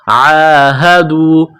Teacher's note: عین کو گلے سے نکالیں گے زور لگا کر